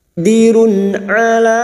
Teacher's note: dhamma tanwin bertemu ain, idhar, halki dibaca jelas tanpa mendengung